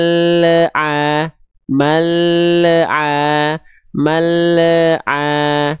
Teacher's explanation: kenapa dia ada bunyi e e yang sering kita sebut dengan memantul karena makhraj lamnya belum tuntas dia udah turun sedangkan huruf setelah lam sukunnya belum kita lafalkan akhirnya ada bunyi